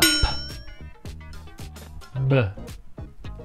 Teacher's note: l'unica differenza tra la P e la B è che nella B si utilizzano le corde vocali